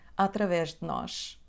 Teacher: A letra E na preposição de também cai